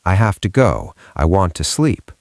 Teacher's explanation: To usually becomes ta. It is the schwa again.